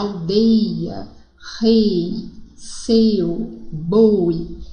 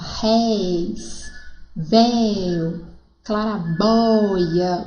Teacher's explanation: Então, um é de ditongo fechado e o outro de ditongo aberto.